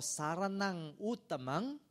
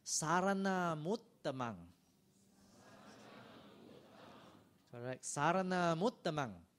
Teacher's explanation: Because the following word starts with the vowel U, the sound of M is borrowed, is loaned to the next word. So instead of saranang uttamang, which is not wrong, but usually it is pronounced sarana muttamang.